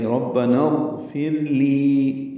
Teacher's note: لی یا مدہ ہے، 2 حرکات لمبا کریں گے، ربنا اغفر لی، یہ اکٹھا پڑھنا.